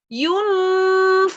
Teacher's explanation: Walaupun dia ya samar itu agak-agak mendengung tapi tidak full mendengung. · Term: ikhfa